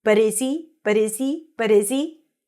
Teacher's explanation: Look at those reductions, and the H is not pronounced when it's connected.